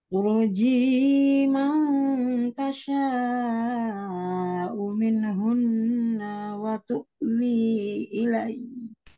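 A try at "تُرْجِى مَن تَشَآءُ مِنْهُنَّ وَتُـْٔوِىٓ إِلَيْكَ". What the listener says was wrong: Wa tuwi 5 harokat, tapi turjinya jangan panjang banget. Turjinya ya, tadi seret-seret.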